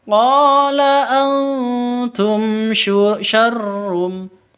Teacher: Antum, nun mati bertemu dengan ta, samar didengungkan, samar disertai dengung 2 ketuk, ikhfa hakiki. Antum siap-siap ke huruf ta-nya.